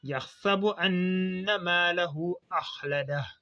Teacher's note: quand le hu est suivi d'un hamza, donc il est prolongé de 4 à 5 temps. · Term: mad silatil kubra